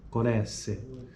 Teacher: Corresse, voce del verbo correre, si pronuncia con la E chiusa